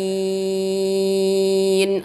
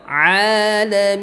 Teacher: Ain dari tenggorokan yang bagian tengah, seperti ha kecil juga